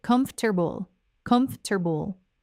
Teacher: But the way native speakers actually say it in normal flowing speech is quite different. In natural English, the word comfortable is said in 3 syllables, not 4. It sounds like comfortable, comfortable.